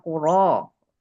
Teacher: Ro yang berbaris fathah maka dibaca tebal atau tafkhim